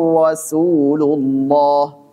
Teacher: Rasulu dhammah, kemudian Allah tebal.